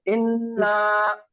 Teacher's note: نون مشدد کے ساتھ نون الف زبر نا, تو غنہ کر کے الف مدہ کے قاعدے کے ساتھ پڑھیں گے